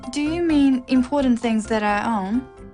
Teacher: It's a yes-no question with a rising tone.